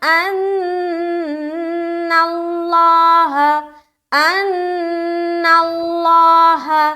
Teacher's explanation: ان میں نون مشدد کا غنہ کریں گے, لفظ اللہ کا جو لام ہے اسے موٹا رکھنا ہے.